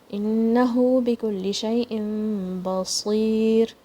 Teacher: And this ra is going to be light.